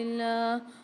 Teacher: اللہ کے لام کو باریک پڑھیں گے، اس سے پہلے زیر آ رہی ہے